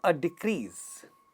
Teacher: when we say a decrease, we know that the first one is getting stressed